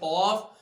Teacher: क़ाफ का मखरज जुबान की जड़ बिल्कुल ऊपर अपने तालु के साथ जब ऊपर की तरफ उठती है, टच होती है, तो वहां से क़ाफ।